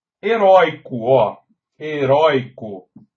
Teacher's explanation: A sílaba tônica é a penúltima. Tem o ditongo aberto oi, ele é tônico, mas como está na penúltima sílaba tônica, ele não tem mais acento.